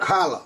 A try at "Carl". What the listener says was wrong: Not Carla. Oh. Just Carl.